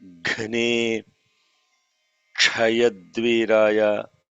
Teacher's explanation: that is a Kha and a Sha together. It is not K, it is a Kha.